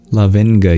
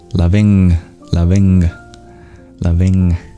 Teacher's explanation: You do bring your articulation to the place in the mouth that a G is produced and you do nasalize just like you do an N.